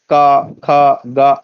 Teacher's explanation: कवर्ग का कंठ में स्पर्श होगा